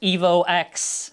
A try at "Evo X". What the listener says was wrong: The X is silent as far as I'm aware.